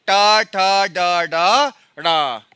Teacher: देखो आपकी जीभ ताल मूर्धन में टकरा रही है · देखो आपकी जो जीभ है वो पीछे आ रही है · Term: मूर्धन्य ध्वनि